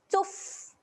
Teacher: Fa dekat sini dia ada tanda mati. Jadi huruf fa ketika mati sifatnya adalah keluar. Keluarkan angin.